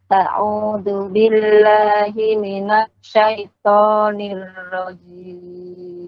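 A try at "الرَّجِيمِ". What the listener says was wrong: Oke, jangan zim, ya. Zim berubah artinya, ya. Nirrajim. Nirrajim. Ja ya.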